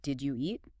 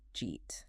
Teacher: Another classic example is, did you eat? Which often becomes just jeet.